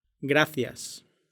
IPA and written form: ˈɡɾa.θjas (gracias)